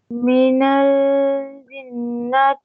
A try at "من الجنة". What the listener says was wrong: Don't say من ال. Don't pause on lam.